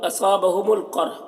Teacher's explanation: قاف کو پر پڑھنا ہے، را کو بھی پر پڑھنا ہے